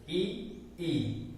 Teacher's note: इनको हम तालव्य कहते हैं, तालु से टकराकर ध्वनि आई इसलिए तालव्य कहलाते हैं